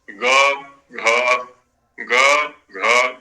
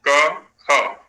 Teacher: अब देखिए 63वें वर्ष में वर्ण, उसमें सूत्र में घोषवंतः, वहां पर घोष शब्द का प्रयोग है। तृतीय और चतुर्थ वर्ण का जो उच्चारण है वो घोष से होगा, क्योंकि वहां पर कंठ संकुचित होगा, संवृत होगा।